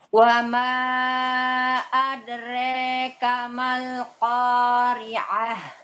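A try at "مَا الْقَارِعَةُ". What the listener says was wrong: Masih salah itu. Ain kurang, Ibu. Ainnya bukan ain, itu hamzah. Ibu bacanya gini nih tadi. Al-Qari'ah, Mal-Qari'ah. Bacanya gitu. Harusnya Al-Qari'ah, Mal-Qari'ah. Wa ma adrika mal-Qari'ah.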